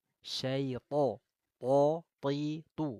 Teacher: huruf tho itu tafkhim tebal angkat pangkal lidahnya